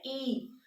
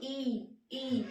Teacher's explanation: ई आपकी जीभ के ऊपर वाले हिस्से पर टच होती है, तो ये आपके हो जाएंगे ई और बड़ी ई। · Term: तालव्य